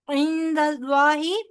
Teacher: نون ساکن کے بعد دال ہے، لہٰذا یہاں پر بھی اخفا ہوگا